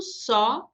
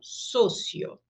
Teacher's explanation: em português o O é aberto, só, em espanhol, sempre fechado, socio.